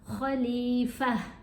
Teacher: یہ جو گولتا ہے یہ خاموش ہو جاتی ہے اگر اس کے اوپر ہم وقف کریں تو یہ ہا کی آواز دیتی ہے. ابھی جیسے میں نے پڑھا خلیفہ، تو یہ تا ٹوٹلی سائلنٹ ہو گئی.